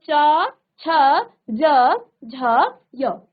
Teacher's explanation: ये आपका तालू से आ रहा है ये आवाज आपके जो जीभ है वो तालू को स्पर्श कर रही है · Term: तालव्य